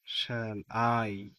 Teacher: শ্যালের উপরে আনস্ট্রেস কিন্তু আই এর উপরে স্ট্রেস শ্যাল আই আই এর উপর একটা জোর আছে কমপেয়ার পেয়ারের উপর